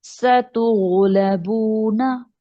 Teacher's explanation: सतुगलबूना एक लफ्ज पढ़ेंगे दोबारा, गैन को मोटा रखेंगे, बाकी सारे हरूफ को बारीक